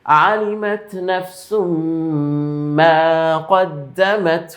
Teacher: তানবিনের পরে মিম তথা ইদগামের গুন্না